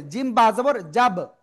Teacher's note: বা উচ্চারিত হয় দুই ঠোঁটের ভিজা অংশ থেকে